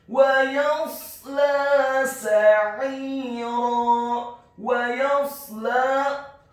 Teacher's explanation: Ayat yang selanjutnya, wa yasla sa'ira, wa yasla, huruf wawunya dibaca fathah 1 harokat, huruf ya-nya dibaca tipis fathah 1 harokat, huruf shad-nya dibaca tafkhim sukun dengan posisi bibir bawah kita agak tertutup. Kemudian huruf lam-nya dibaca tipis fathah 2 harokat karena harokatnya tegak, dan setelahnya seperti ada huruf ya sukun yang fungsinya menambahkan 1 harokat.